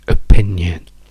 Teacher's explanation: È in opinion, quindi P è la sillaba accentata, e le due O, col fatto che sono in sillabe non accentate, diventano tutti e due schwa. Quindi non diciamo opinion, perché vedete, se dico O, guardate quanto movimento c'è, quindi questa O sarebbe un suono pieno, un suono forte.